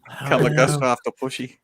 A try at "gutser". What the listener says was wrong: It's not. You got to make sure that the T comes first, though. Gutser. Actually, you can probably pronounce it like this.